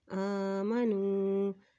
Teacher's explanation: حمزہ کے اوپر کھڑی زبر ہے، اس لیے اس کو ایک حرکت لمبا ادا کریں گے